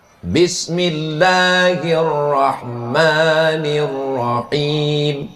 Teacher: Nabi mengucapkan basmalah dengan tiga mad. Bismillahirrahmanirrahim. Tiga mad. Mad artinya intonasi panjang suara.